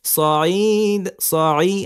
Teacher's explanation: আইনকে একটু চাপ দিতে হবে কিন্তু গলায়